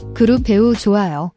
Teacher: a soft j sound, similar to the j in jeep, not a harsh ch sound